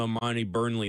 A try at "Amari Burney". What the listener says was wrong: Amari Burney. No L in there.